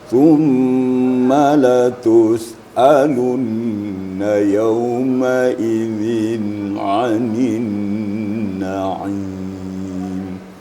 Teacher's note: Cuma sedikit ada masukan tentang huruf Ain ya. Ain itu kan makhrij hurufnya pada wastul halaq, pertengahan tenggorokan. Jadi betul-betul dirasakan getarannya di tengah tenggorokan.